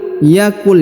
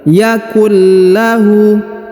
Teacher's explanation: Perhatikan huruf nun sukun bertemu dengan lam bertasdid. Maka nun sukunnya menghilang melebur ke huruf lam bertasdid ini, ya. Dan ditahan serta ditekan 2 harokat.